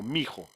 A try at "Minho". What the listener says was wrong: you say the N. Minho.